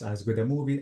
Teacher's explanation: So notice as good a movie, approximately or barely I pronounced the A. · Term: linking